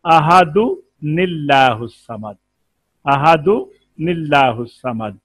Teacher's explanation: अहादुन की एक पेश को बाकी रख लें और एक पेश जो है वो जेर वाली नून बना लें